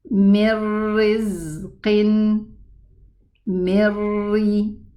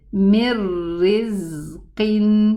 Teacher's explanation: The noon merged into the ra totally, that it did not even leave its ghunna behind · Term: total merging